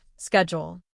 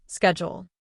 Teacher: For example, in American English, people often say schedule with a SK sound, schedule. In British English, people often say it with a SH sound, schedule.